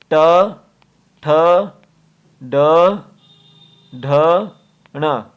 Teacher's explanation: मूर्धा होगा आपका जब जीभ का अगला पार्ट जो है मसूड़ों में छुएगा।